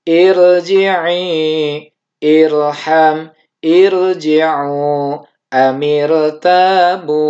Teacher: ro sukun ini setelahnya dia didahului oleh huruf yang di kasroh namun bukan kasroh asli, maka ini tetap dihukumi tafkhim.